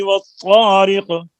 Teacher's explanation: پہلی آیت میں لام تعریف کا ادغام ہے طا میں